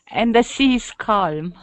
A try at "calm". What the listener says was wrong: Calm. Calm sea. Calm sea. We don't emphasize the L in calm. It's calm. So it's like a K sound.